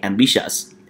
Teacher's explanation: So we stress on the second syllable.